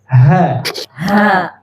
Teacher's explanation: Ini ha pangkal tenggorokan